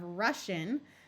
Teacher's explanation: the S Sound by itself disappears and gets taken over by the sh sound